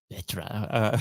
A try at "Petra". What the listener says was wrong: It's Petra, so it kind of ends with an O instead of an A, but I think within the sort of English alphabet, those sounds don't necessarily exist.